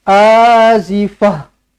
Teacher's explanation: Tukarkan ta marbutah ini menjadi huruf ha